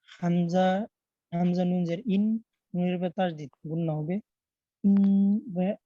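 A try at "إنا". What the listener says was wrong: গুণনাতে আরো সময় নিবেন সর্ব অবস্থায়। বানানের সময়ও যেন সময়টা কম না হয়। ইন জি ওয়াজিব গুণনা।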